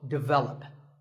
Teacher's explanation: English as develop but the first syllable is actually dick and the stress is on the second syllable